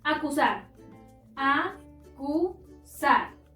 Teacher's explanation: Encontramos la sílaba tónica en sar, es decir, la última sílaba, pero no termina en n, s o vocal, por lo tanto, no se acentúa.